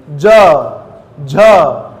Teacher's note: vibration है, मैं आवाज खींच सकता हूं सर, ये सघोष है